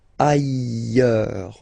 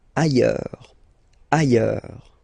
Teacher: final S not pronounced, and then you've got this y sound